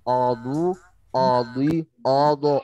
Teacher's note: Ya, jangan sampai A-nya ikutan tebal ya.